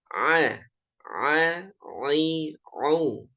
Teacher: Kalau ain itu menggunakan tenggorokan bagian tengah, naik sedikit.